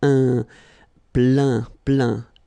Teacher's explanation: Remember this E-I-N nasal. So it goes in your nose